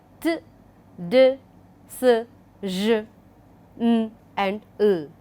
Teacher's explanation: Then you have alveolars, where the front part of the tongue touches the alveolar ridge